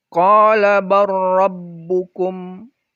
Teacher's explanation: Jadi dia dibaca idgham. Tidak dibaca bal rabbukum.